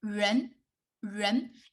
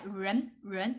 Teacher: you can feel you just rolling your tongue back